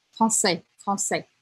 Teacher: Sim, mas, por exemplo, deixa eu pensar aqui, français, eu nunca falo français, tá, bem fechadinho, sempre é um pouco mais aberto